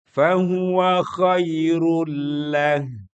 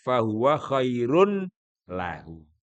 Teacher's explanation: Tapi kalau disambung bacaannya tanwinnya hilang masuk kepada lam